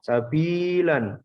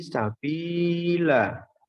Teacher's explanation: fathah tanwin pada akhir kata jika waqaf atau berhenti dibaca mat atau panjang. Sehingga harokat tanwin tidak lagi dibunyikan. Jadi bacanya bukan sabilan, tapi sabila.